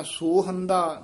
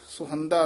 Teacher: ਇਹ ਸੁਹੰਦਾ ਹੋੜਾ ਵੀ ਹੈ ਤੇ ਔਂਕੜ ਵੀ ਹੈ ਇਹ ਦਰਮਿਆਨਾ ਜਿਹਾ ਉਚਾਰਨ ਕਰ ਦੇਣਾ ਨਾ ਕਹਿਣਾ ਸੋਹੰਦਾ ਨਾ ਕਹਿਣਾ ਸਹੰਦਾ ਵਿਚਾਲੜਾ ਜਿਹਾ ਮੇਲ ਉਚਾਰਨ ਕਰਨਾ